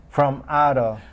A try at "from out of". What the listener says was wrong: Now, when you pronounce that M, you didn't link it because you were so focused on saying M instead of N. Hold the M. It's almost like there's all these M's there.